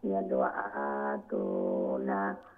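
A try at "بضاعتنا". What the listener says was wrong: বিদাআতুনা, আইন শর্ট, এটা আইনের পরে আলিফ নাই, খাড়া জবর নাই। দোয়া লং হবে, দোয়াদের পরে আলিফ আছে। হাযিহি বিদাআতুনা, না লং হবে, নুনের পরে আলিফ আছে।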